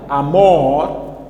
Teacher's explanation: amor temos como sílaba tônica é a última